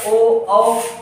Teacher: ओ औ, इन सबको बोलेंगे तो आपका ओठ कैसा होगा, स्ट्रक्चर गोल हो जाएगा। तो ये कैसा हो जाएगा, वृत्तमुखी हो जाएगा। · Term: वृत्तमुखी स्वर